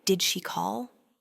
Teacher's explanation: that gentle upward lift on call indicates a question